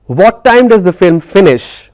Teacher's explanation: So finish it's coming down. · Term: falling intonation